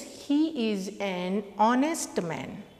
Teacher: it is pronounced as vowel O, and in pronunciation letter H is silent here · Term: silent letter H